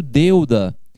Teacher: Quando eu pronuncio deuda, eu pronuncio na mesma sílaba de uma só vez o E e o U. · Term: ditongo